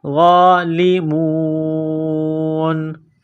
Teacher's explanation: وَأَنْتُمْ، حمزہ کو نون کے ساتھ ملانا ہے، نون ساکن کے بعد تا ہے، حروف اخفا ہے، غنہ کریں گے، آواز ناک میں چھپائیں گے، وَأَنْتُمْ ظَالِمُونَ۔ وا کے اوپر کڑا زبر ہے، 1 الف کے لمٹ میں کھینچنا ہے، غالمون۔ اس آیت کو مکمل پڑھتے ہیں، میرے ساتھ پڑھتے جائیں۔